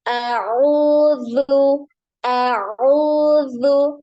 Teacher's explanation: huruf zal ini tidak naik ya, pangkal lidahnya terhampar ya, jadi jangan dinaikkan pangkal lidah.